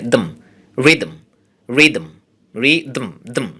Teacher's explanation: দ এবং ম প্রায় অ্যাট এ টাইম মুখ থেকে উচ্চারণ হয় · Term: সিলেবিক কনসোনেন্ট